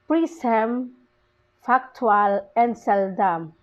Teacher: these words receive the primary stress on the first syllable